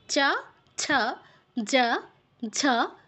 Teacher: চ বর্গের অক্ষরগুলো হচ্ছে আমাদের তালুতে টাচ করে উচ্চারণটা হচ্ছে তালুটা কোন জায়গা দাঁতের ঠিক পেছনের অংশ একদম মিডেলে নয় কিন্তু